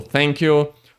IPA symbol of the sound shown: θ